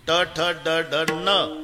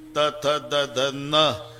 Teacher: ट ठ ड ढ न दाताशी संबंध नाही त थ द ध न दाताशिवाय उच्चार नाही